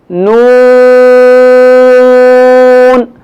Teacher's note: نون کے ادا کرتے وقت ناک کے بانسے سے جو ہے وہ آواز آئے گی